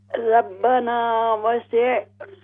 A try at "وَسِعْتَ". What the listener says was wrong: ہاں جی یعنی یہ حمزہ اس کو نہیں بنانا, یہ آئین ہے, آئین.